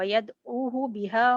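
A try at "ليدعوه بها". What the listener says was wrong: वयदू नहीं है, दोबारा से देखें।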